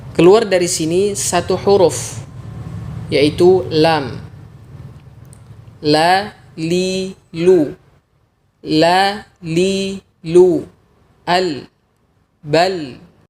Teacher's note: Sebenarnya makhraj huruf lam ini kurang lebih sama seperti makhraj huruf nun yaitu ujung lidah dan gusi atas. Hanya saja huruf lam melibatkan juga tepi lidah, tidak hanya ujung lidah saja.